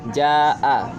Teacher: Alasannya sebab ada mad tabi'i bertemu dengan hamzah dalam satu kata. Panjang mad wajib mutasil adalah 5 harokat.